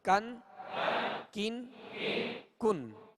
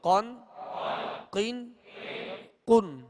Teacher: ڈنڈی والا جو کاف ہوتا ہے اس کو باریک پڑھیں گے، اور اس سے آگے جو قاف ہے اس کو پر پڑھیں گے، موٹا پڑھیں گے، اس لیے کہ یہ حروف مستعلیہ میں سے ہے۔